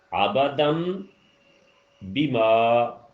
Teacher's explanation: آبادم بیما کیا فرق تھا کہ بیما جو ہے اس کی آواز بیما کی بجائے بیما ہو گئی، یعنی ناک میں نون کا غنہ کر دیا آپ نے